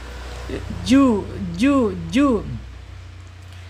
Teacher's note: Jim secara makhraj jim ini ada di alisan ya. Alisan yaitu punggung lidah yang tengah ya, punggung lidah yang tengah terangkat. Tetapi bukan huruf isti'la, karena terangkatnya tidak full ya, hanya terangkat, udara tetap keluar ya.